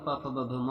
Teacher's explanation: प वर्ग में प फ ब भ म आता है जिसे ओष्ठ ध्वनियाँ भी कहते हैं